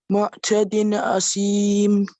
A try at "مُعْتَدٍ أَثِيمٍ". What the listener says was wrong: So this one is a tha, not C. Mu'tadin athim, right? Mu'tadin athim. Yeah, so this is the izhar here between mu'tadin and athim, right? Manna'il lil khayri mu'tadin athim. معتد, right? معتد أثيم. معتد أثيم.